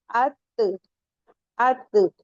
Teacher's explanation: जो हमारे जबान की नोक है ऊपर दरमियानी दांतों के जो मिडिल वाले दांत है जिन्हें आपको सनाए ओलिया बताया गया था उसके रूट में जाके लगेंगे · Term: ता दाल ता